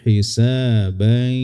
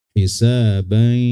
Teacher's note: memasukkan tanwin ke ya disertai dengan gunnah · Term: idgham bi gunnah